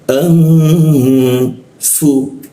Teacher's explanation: nun mati bertemu fa dia didengungkan dia didengungkan ditahan